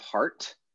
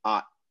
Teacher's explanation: It's just like a vowel plus a glottal stop, and that's the whole word.